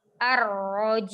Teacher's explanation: Di akhirnya ada mim sukun, tidak dipanjangkan